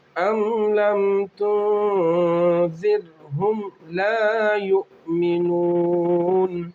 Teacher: یہاں پر را ساکنہ ہے، رائے ساکنہ سے پہلے زیر ہے، رائے ساکنہ باریک ہوں گی